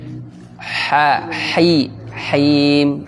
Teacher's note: ha di tengah tenggorokan